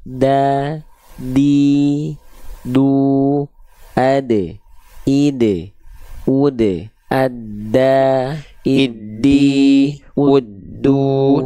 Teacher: Cuma bedanya Dal itu tipis dan dia tidak ada percikan nafas seperti Huruf ta